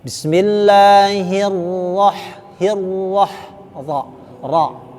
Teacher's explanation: Nah, jadi tidak terlalu ro. Ya, jadi bukan R, ra tebal, ra-nya tafkhim tebal